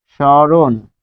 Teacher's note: দন্তস্ব এর সাথে মফলা বসলে সে তালব্যস্য হয়, এবং মফলা যেহেতু বসছে তাই এখানে চন্দ্রবিন্দু দিতে হবে।